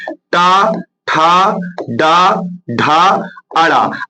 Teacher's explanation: अब देखिए ये पांचों अक्षर मूर्धन्य है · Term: ट वर्ग